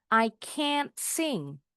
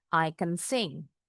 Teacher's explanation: Bunyi a-nya agak panjang. Jadi, bukan t-nya yang diperjelas.